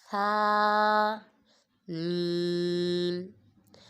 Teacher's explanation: ثا میں سیٹی نہیں نکالیں گے.